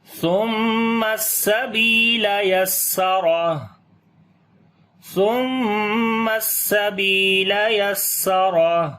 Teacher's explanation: گے، سبیلا، با کو لمبا کریں گے، یا مدہ ہے اور سین کی آواز کے اوپر سٹرونگ کر کے پڑھیں گے، صفت سفیر اور ہمس ہوگی · سا کو نرم پڑھیں گے، میم کے اوپر شد ہے، غنہ کریں گے